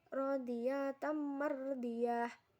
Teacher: dibaca masuk dengan dengung dan ditahan hingga tiga harokat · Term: Idgham Bighunnah